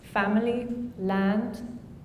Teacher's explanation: The tongue is positioned relatively low and back in the mouth.